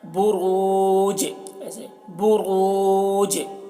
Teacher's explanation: جیم بھی حروف قلقلہ میں سے ہے اور اس کے اوپر جزم بھی ہے تو جیم میں قلقلہ ہوگا